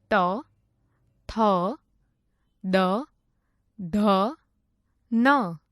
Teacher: જે વર્ણોનું ઉચ્ચારણ કરવા માટે જીભ વડે ઉપલા દાંતોને સ્પર્શ કરવું પડે તે વર્ણોને દંત્ય વર્ણો કહે છે